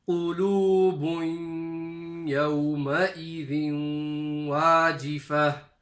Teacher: you'll make a nasal sound, and it's called idgham with a ghunna.